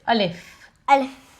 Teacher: the letter alif comes from the emptiness of the mouth.